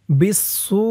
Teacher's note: এখানে 4 আলিফ টান হবে মধ্যে মুত্তাসিল